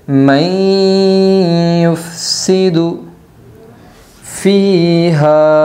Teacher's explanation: اتجعل فیہا من یفسد ادغام مع الغنہ ہوگا، نون ساکن کے بعد یمن کے 4 حرفوں میں سے یا آئی ہے، اس لیے نون کو غنہ کے ساتھ پڑھے گی